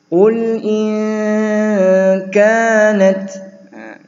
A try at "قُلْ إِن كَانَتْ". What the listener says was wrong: kanat ada hams ya, ada sedikit laju nafas keluar. kanat kayaknya panjang